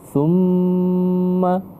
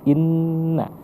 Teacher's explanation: Kalau nun beda lagi dia tergantung dengan posisi makharijul huruf, keluar hurufnya. Kalau ma kedua bibir yang tertutup, kalau na tidak. Dia tidak bisa ditutup.